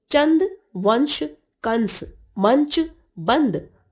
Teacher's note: अनुस्वार, इस वर्ण का उच्चारण करते समय वायु नाक से बाहर निकलती है।